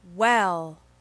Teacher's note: at the beginning of the W sound your lips are very close together